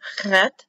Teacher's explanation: Chet, guttural sound, chet, like Bach, CH, closed H.